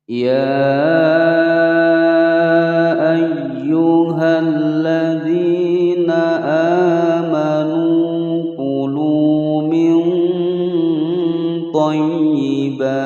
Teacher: Ya dibaca panjang selama 5 ketukan. Hukum bacaan mad jaiz munfasil.